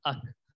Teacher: قاف کے مخرج سے تھوڑا سا ہٹ کے کاف ادا ہوتا ہے